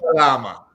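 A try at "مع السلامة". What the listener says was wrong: You got to get ma. You got to get that glottal part in. Ma salama.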